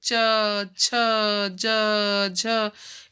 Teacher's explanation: च वर्ग का उच्चारण स्थल तालु है